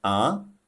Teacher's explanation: The second tone, a, it starts around the middle pitch, then rises to the high pitch. We call it the rising tone.